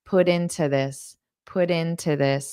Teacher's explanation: instead of to I might do an unstressed t